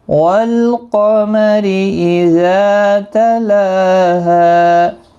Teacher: ساکن کو ہلانا نہیں، قاف مستعلیہ ہے، پر پڑھا جائے گا، را زیر کی وجہ سے باریک پڑھا جائے گا ، اذا زا الف مدہ ہے، لام کے اوپر کھڑی حرکات · جائے گا، را زیر کی وجہ سے باریک پڑھا جائے گا، اذا زا الف مدہ ہے، لام کے اوپر کھڑی حرکات ہے، ایک الف کی مقدار کے برابر کھینچ کر پڑھیں گے ، ہا الف مدہ ہے، ایک الف کے برابر کھینچ کر